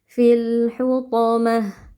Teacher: Huruf th huruf tebal kita baca dengan mengangkat pangkal lidah. Lalu ta marbutah waqof diganti menjadi ha sukun